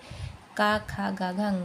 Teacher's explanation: का, खा, गा, घा, अंगा ये कंठ से बोले जाते हैं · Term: क वर्ग